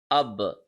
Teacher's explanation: So there is an echo sound. There is a returning sound.